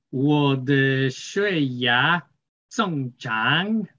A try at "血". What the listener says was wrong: 血, you make it going up. So 血 is the third intonation.